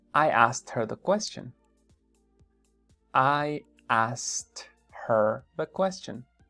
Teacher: Se va a comer la K. No va a decir I asked her the question.